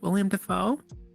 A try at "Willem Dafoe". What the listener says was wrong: Willem. Willem. Not William. Willem. No. One eye. Willem. It's one eye. Willem. Spelled with an E. Willem Dafoe. He is not William. Yes, he is Willem. Willem Dafoe.